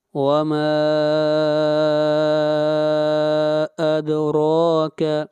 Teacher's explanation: ما کے اوپر مد منفصل ہے، اس مد کو بھی 3 الف کے برابر کھینچ کر پڑھیں گے